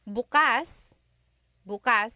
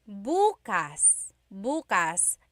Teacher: If you say bukas, bukas, the emphasis is on the second syllable. That means open. If you say bukas, bukas, emphasis is on the first syllable. That means tomorrow.